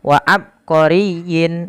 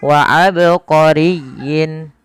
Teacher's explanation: Qalqalah artinya memantul maka tatkala kita membaca ba di sini harus dipantulkan kesalahan yang terjadi adalah tidak memantulkan huruf ba contoh wa abqoriyin